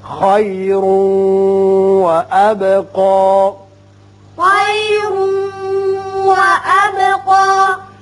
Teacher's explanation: را پر پڑھیے اور یہاں ادغام غننے کے ساتھ کیجیے۔